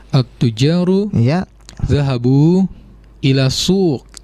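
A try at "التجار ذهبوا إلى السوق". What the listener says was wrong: Betul.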